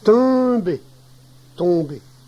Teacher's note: Le verbe tomber a une prononciation difficile pour les personnes qui ne parlent pas normalement le cauchois, car ce n'est ni un, ni on, ni un, mais plutôt une nasalisation du e. Tomber, tomber.